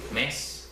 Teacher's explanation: la S es muy larga, pero el ascenso ocurre rápidamente en la E